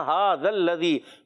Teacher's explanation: ہا ایک الف کھینچنا ہے، کھڑی حرکات ہیں